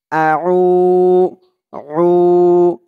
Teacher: আইনের উচ্চারণটা গলার ভেতর থেকে শক্ত করে আনতে হবে